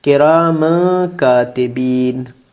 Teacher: یہ میم پہ تنوین ہے، اس کے بعد پھر کاف ہے، حروف حلقی میں سے نہیں ہے، تو اس لیے یہاں پہ اخفا ہوگا، یعنی آواز ہماری ناک میں جائے گی تھوڑی سی